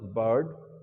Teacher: our tongue remains Central intact it does not move forward does not go back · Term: Central vowel